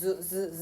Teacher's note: 즈도 마찰음인데 울림소리인 거 반치음 기억하세요. Z 발음이라고 생각하면 돼.